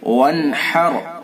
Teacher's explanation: فصل لربک وانحر، فصل، اس صاد کو پر کریں گے، لربک، را کو پر کریں گے، وانحر، وانحر، اظہار حلقی ہوگا، نون ساکن کے بعد حروف حلقی میں سے حا ہے، اس لیے اظہار حلقی ہوگا